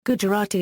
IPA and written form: ɡʊdʒəˈrɑːti (Gujarati)